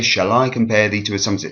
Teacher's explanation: it starts unstressed and then goes stressed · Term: rising meter